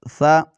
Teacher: ذال زیر ذی ذال پیش لو ذو بالکل اسی طرح سا کو بھی پڑھنا ہے، ان کا مخرج ایک ہی ہے، یعنی ایک ہی جگہ سے یہ حروف نکل رہے ہیں۔ سا زبر سا سیٹی کی آواز بالکل نہیں نکالیں گے وگرنہ یہ سین میں تبدیل ہو جائے گا